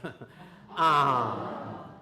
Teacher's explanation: With nasalized vowels the veum is in the middle and the air comes out through the mouth and the nose at the same time